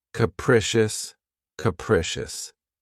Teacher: This word has 3 syllables, and the stress is on the second syllable. Keep in mind that the first syllable has that schwa sound.